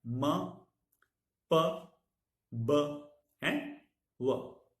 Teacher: Two lips are the articulators, and the sounds we have m, p, b, and w. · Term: bilabial consonants